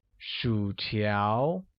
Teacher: uses a falling rising tone on U and a mid-rising tone on A